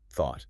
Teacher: You literally have to stick your tongue between your teeth and blow air to create friction